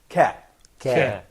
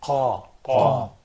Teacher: qaf probably is pronounced by the final part of the soft palate